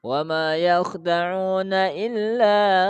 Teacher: majaiz itu dua alif panjangnya 4 harokat ya